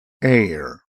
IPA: eɪɚ